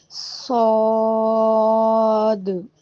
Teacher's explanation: جب ہم صاد پڑھتے ہیں نا، آخر میں جو دال کی آواز آ رہی ہے اس کو ہلانا ہے، یعنی ایکو ساؤنڈ دینا ہے۔